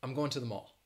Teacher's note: instead of pronouncing it to, overwhelmingly in the United States, people will pronounce it that schwa sound, t. So instead of saying to, say t.